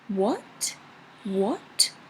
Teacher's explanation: the second one is like a question what what the rising question